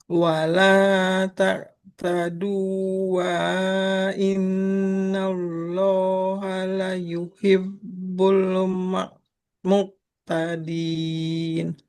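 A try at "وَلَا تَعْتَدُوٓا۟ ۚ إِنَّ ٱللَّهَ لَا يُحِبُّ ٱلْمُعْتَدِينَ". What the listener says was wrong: Nah, ini huruf wa-nya nggak boleh dibaca Ibu. Ini kan hurufnya wa-nya wa madiyah wa mat. dhamma ketemu waw panjang. Jadi nggak boleh dibaca. Wala ta'tadu innallaha la yuhibbul mu'tadin.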